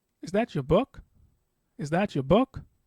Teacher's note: And that's when you basically use a rising intonation. That is, towards the end of the sentence, your pitch becomes higher.